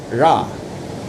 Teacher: There’s also a fun retroflex approximant, ɻa, It's a bit like the American English R.